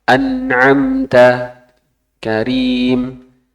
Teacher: Itu idhar sukun biasa yang kadar gunnahnya pendek.